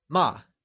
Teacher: Scold, which translates to ma, carries the falling tone, or the fourth tone